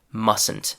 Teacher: The contraction mustn't is written with the letter T, but the T is not pronounced.